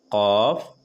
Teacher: زبان کی جڑ یعنی کہ زبان کے آخری والا حصہ جو تالو کے نرم والے حصے سے سٹا کر قاف ادا ہوتے ہیں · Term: بڑی قاف